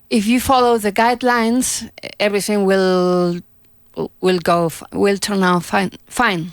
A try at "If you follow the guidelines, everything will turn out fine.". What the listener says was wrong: Pronounce the T and out.